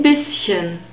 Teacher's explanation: we have a short e sound in bisschen and a sharp s